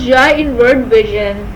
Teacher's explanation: In its articulation, the middle of the tongue makes a hump that comes close to hard palate but only slightly behind the alveolar ridge. The air rushes out with strong friction and a sharp sound of Ja is produced as in vision. It is voiced as vocal cords vibrate in its articulation.